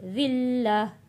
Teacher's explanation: وقف کریں گے تو گولتا ہا میں بدل جائے گی، دو پیش ختم ہو جائیں گے۔